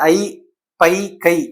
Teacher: ஐ எழுத்துக்கள் தனித்து வரும் இடங்களில் தன்னுடைய இரண்டு மாத்திரை அளவில் தான் ஒளிக்கும்